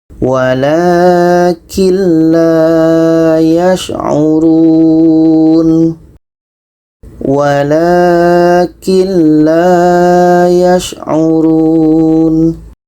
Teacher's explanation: jadi kita baca secara masuk dan tidak dengung masuk itu maksudnya bunyi Nun kita masukkan ke la dan di sini tidak ada dengung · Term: idgham bilagunnah